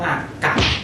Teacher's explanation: มันมีรูปสามัญแต่ว่ามันออกเสียงเอก